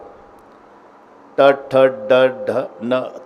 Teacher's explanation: जीभ वाकडी होऊन वरच्या टाळूला स्पर्श करते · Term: मूर्धन्य